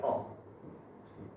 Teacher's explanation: तो अ का उच्चारण स्थान होता है कंठ